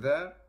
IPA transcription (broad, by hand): ðeəʳ